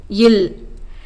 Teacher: மேல்வாய் பல்லின் அடியை நாக்கின் ஓரங்கள் தடித்து நெருங்குவதால் பிறக்கும் மெய்ெழுத்து